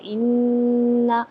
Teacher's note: انا نون مشدد ہے تو یہاں پر غنہ ہوگا